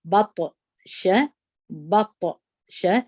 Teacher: طا د قلقلې د تورو څخه ده، دلته موږ تاسې قلقله کوو